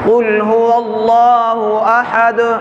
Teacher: آیت کے آخر کے اندر جو دال آ رہی ہے اس پر آواز کو ہلانا ہے